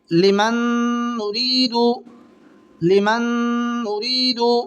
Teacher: نون ساکن کے بعد میں نون آ رہی ہے، تو یہاں پر ادغام مال گنہ ہوگا، اس کو ادغام ناقص بھی کہتے ہیں، اور یہ گنہ کے ساتھ ملا کر کے پڑھا جائے گا